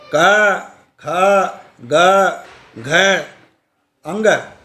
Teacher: ये शब्द कंठ के अंदर ध्वनि की वाइब्रेशन से उत्पन्न हुए शब्द हैं। इनसे ध्वनि से उत्पन्न जो शब्द हैं इनकी ध्वनियाँ गले के वाइब्रेशन से पैदा हो रही हैं।